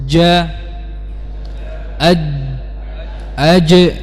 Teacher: Yang berbeda apa? Perhatikan huruf jim dia rapat makhrajnya, ya, tidak ada celah sama sekali.